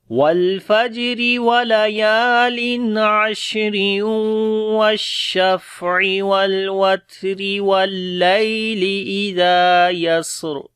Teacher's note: تو یہاں پر رکے ہیں، اس وجہ سے را موٹی ہوئی ہے، لیکن باقی جگہوں کے اوپر را کو باریک پڑھا ہے